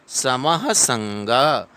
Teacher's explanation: समः संग, सम उसके बाद में विसर्ग है, विसर्ग को ह पढ़ेंगे तो थोड़ा फास्ट पढ़ेंगे